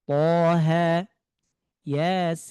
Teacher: Ya-nya 2 harokat, sinnya 6 harokat. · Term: mad lazim